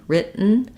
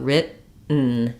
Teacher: I go up to make that T, written, and then I don't let the T out. There's no burst of air, not written with a T, but written. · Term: unreleased T